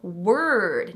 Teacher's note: The O in word is another R-colored vowel. Word, not ward, but word.